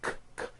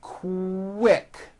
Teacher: Q sounds are made with the K sound, k, k, and the W sound, w, put together.